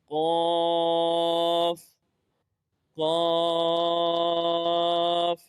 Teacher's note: زبان کی جڑ اور تالو کے نرم حصے سے ادا ہوتا ہے